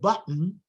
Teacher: nasals can become syllabic at the end of a word right after an obstruct so um in the word button which · in the word button which I just uh mentioned or cotton the obstruent there is the glottal stop which was a t or is a t psychologically and then the N is all